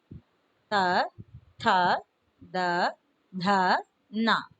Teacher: इसका उच्चारण स्थान है दांत, इसलिए इन वर्णों का नाम है दंत्य, दंत्य व्यंजन कहलाता है।